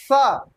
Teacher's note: क्या होता है, दंत्य, दंत्य, अधना अधता या पूरा, यानी दंत सा बोलिए, छोटा सा सा। तो देखिए जो सा आप कहते हैं तो आपका जो जीभ है वो नीचे वाला जो दांत है उससे जाके टकराती है